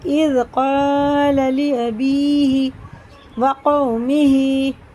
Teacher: واو ساکن سے پہلے زبر، یہ بھی حرف لین ہے، اس کو بھی جلدی پڑھیں گے